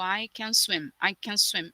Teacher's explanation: Esse can, ele tem uma forma fraca, que é com schwa